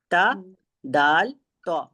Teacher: जबान की नोक हमारी ऊपर की दो दांतों की जड़ में लगी तो दाल अदा हो गया हमारा त भी वहीं से होता है और त भी वहीं